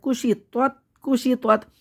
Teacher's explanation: تو کو موٹا پڑھنا ہے، تا کو باریک پڑھنا ہے